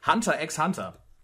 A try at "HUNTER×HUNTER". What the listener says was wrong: Ah, das eigentlich wird es nur Hunter ausgesprochen.